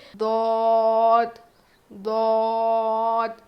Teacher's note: زبان کی کروٹ یعنی زبان کی فولڈنگ کو اوپر کے دانت پہ لگا کر پڑھیں گے، اوپر کے داڑھ پہ لگا کر پڑھیں گے، موٹا پڑھیں گے